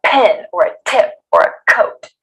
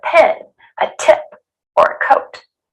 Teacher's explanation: the puff of air isn't forceful. You don't want to overdo it like someone is socking you in the stomach. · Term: gentle puff of air